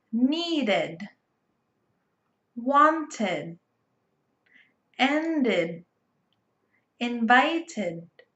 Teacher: When we use it in the past, we add an extra syllable, id, needed. So when we use id, we add an extra syllable to verbs that end in letter T or D. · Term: id sound